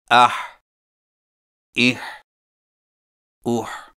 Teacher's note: حا حلق سے رگڑ کھاتی آواز ادائیگی کے وقت زبان کی جڑ کو حلق کی طرف مضبوطی سے دباتے ہوئے ادا کریں